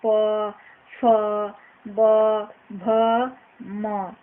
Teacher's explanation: पवर्ग का उच्चारण ओष्ठ से किया जाता है